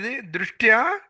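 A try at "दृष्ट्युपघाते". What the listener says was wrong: దృష్ట్యుపఘాతే. ఇక్కడ ఈ ఊ అనేది ఉంది కదా, యూకి పెట్టండి. ఇక్కడ ద్రి షట్ తర్వాత యు ఇక్కడ పెట్టండి. యు దృష్ట్యుపఘాతే.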